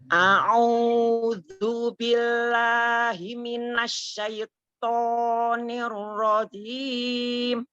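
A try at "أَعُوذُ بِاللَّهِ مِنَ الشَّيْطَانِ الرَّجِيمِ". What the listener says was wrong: Ya, dirilekkan dulu, jangan terlalu kaku ya. Ketika dia fathah dibuka kemudian dia domahnya dimajukan dengan lembut, tidak ditajamkan tidak, tapi a'udzu billahi, lebih natural ya. Lebih natural. A'udzu billahi minasyaitonir rajim.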